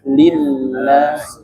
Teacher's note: setiap huruf lam bertasydid jangan dipanjangkan ya. Karena itu bukan mada.